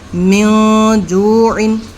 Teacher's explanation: نون ساکن کے بعد جیم آ گیا، تو اب اس میں ہم نون میں غنہ کریں گے۔ تو اس کو اب ہم میم نون زیر من جوعن، من جوعن نہیں پڑھیں گے، بلکہ من جوعن، ایسے یہ من دونکم فمن تبع، ہم نے یہاں پر من پڑھا تھا صرف اظہار میں، اور اس میں ہم من پڑھ رہے ہیں۔ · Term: اخفا